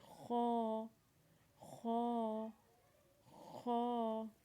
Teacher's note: خا کی آواز بھی آپ نے اپنے حلق سے نکالنی ہے، اور تھوڑا سخت کر کے نکالنا ہے خا کی آواز کو، اور خا کو بھی آپ نے ایک الف کے برابر کھینچنا ہے، جیسے خا.